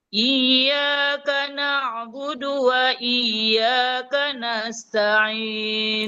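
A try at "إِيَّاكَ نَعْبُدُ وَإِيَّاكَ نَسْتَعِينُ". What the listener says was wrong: Nah, coba I-nya agak di ini Bu, agak diberikan penekanan. Iyyaka na'budu wa iyyaka nasta'in.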